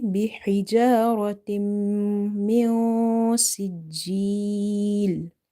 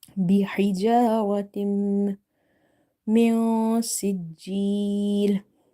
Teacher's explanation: You have to hide the noon sakina sound into the nose. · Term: ikhfa